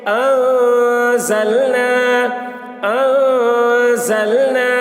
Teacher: نون الف زبر نا، الف سے پہلے زبر ہے، الف مدہ ہوا، اس لیے الف مدہ کو ایک الف کے برابر کھینچ کر پڑھیں گے